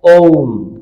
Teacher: तीसरा प्रकार माना जाता है जिसमें दीर्घ स्वर से भी तिगुना समय लगता है यानी लघु स्वर है उसका तीन गुना समय लगता है ऐसा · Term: प्लुत स्वर